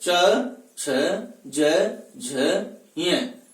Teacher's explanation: च वर्ग की बात करते हैं तो च वर्ग का उच्चारण स्थान क्या होता है, तालु होता है। क्योंकि च वर्ग का उच्चारण जब करते हैं तो प्रत्येक वर्ग का उच्चारण करते समय जिह्वा तालु से स्पर्श करती है। च, छ, ज, झ, य, इसलिए इन्हें तालव्य वर्ण भी कहा जाता है।